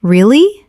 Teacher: when you ask a question like, Really? your voice goes up slightly at the end. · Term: intonation